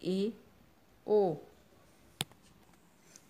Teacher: जिन स्वरों के उच्चारण में जिह्वा और मुख के ऊपरी भाग की दूरी संवृत स्वर की अपेक्षा अधिक रहती है और मुख द्वार आधा बंद रहता है, उन्हें अर्ध संवृत स्वर कहते हैं, जैसे ए, ओ।